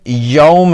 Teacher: لفظ یوم میں واو ساکن سے پہلے یا پر زبر ہے، یہاں واو لین کا قاعدہ لگتا ہے جسے بغیر کھینچے نرمی سے ادا کیا جائے گا۔ اسے معروف لہجے میں یوم پڑھیں گے، کچھ لوگ اسے اردو یا فارسی لہجے میں مجہول طرز پر یوم پڑھتے ہیں، جو کہ غلط ہے۔